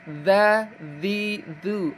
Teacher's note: ujung lidah menempel dengan gigi seri atas. Dza dzi atau digigit ya ujung lidah digigit dua seri.